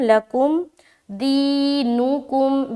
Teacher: صرف یہ خیال رکھے کہ دی میں تھوڑا اسٹریچنگ ہوگا کیونکہ یہاں پر یا مدہ کا قاعدہ ہے